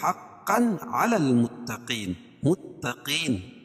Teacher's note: اور یہاں اظہار حلقی ہے کیونکہ تنوین کے بعد حروف حلقی کے 6 حرفوں میں سے عین ہے، تو یہاں ظاہر کر کے پڑھیں گے